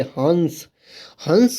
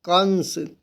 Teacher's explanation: अनुस्वार का उच्चारण नाक से किया जाता है